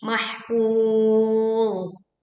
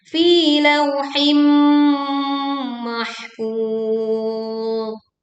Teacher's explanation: mahfuz ini tidak dibaca mantul ya, tetapi alirkan suaranya karena huruf dha bukan huruf dal, bukan huruf qalqalah, tetapi mahfuz.